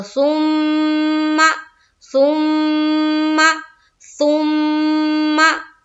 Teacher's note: एक अलिफ के बकदर, नाक में आवाज को रोकना, जिस तरह हम नून में कर रहे थे उसी तरह हम यहाँ मीम में करेंगे। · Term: मीम मुशद्दद का गुन्ना